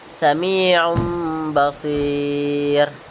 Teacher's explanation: Cara bacanya nun atau tanwin berubah jadi mim lalu dibaca dengan dengung dua harakat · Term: iqlab, iklab